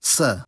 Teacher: a laminal s, made with the blade of the tongue instead of the tip